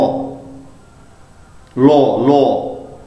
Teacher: শ্বাসবায়ু জিহ্বার দুপাশ দিয়ে, জিভের দুপাশ দিয়ে বেরিয়ে আসছে। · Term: পার্শ্বিক ব্যঞ্জন